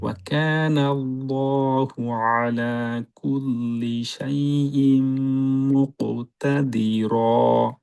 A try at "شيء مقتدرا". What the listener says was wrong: হামজাটা একটু ক্লিয়ার করে, সেই ইম মুকতাদিরা।